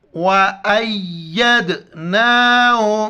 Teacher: دال پر کلکرہ کریں گے، جھٹکے کے ساتھ پڑھیں گے، حمزہ کو یا کے ساتھ ملائیں گے.